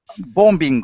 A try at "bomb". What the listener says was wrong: Yeah, you don't say the B, so it's bomb, just the bomb.